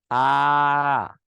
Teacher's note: বিবৃত মানে মুখটা বেশি খোলা থাকবে।